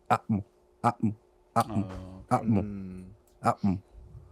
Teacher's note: a pause in between the vowel a to the consonant m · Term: glato stop